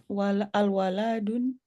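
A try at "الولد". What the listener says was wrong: al-waladu. Al-waladu, lamnya tidak panjang karena langsung masuk ke dal.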